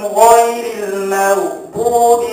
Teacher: memang gin kena tebal tapi mim tak kena tebal